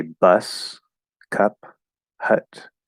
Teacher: So yes, if you say bus, cup, hut, you say them nice and clearly, nice and enunciated, they will be that upside down V, the full vowel sound